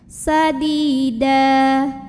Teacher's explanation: baris tanwin fathah ini diganti jadi fathah dan kita panjangkan sepanjang 2 harokat saja. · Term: mad iwad